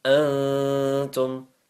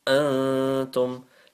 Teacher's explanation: Antum, light nasal sound, lengthen it for a second